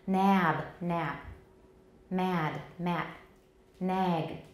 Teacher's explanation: so we need to lengthen and that vowel lengthening is even more important than voicing the final obstruent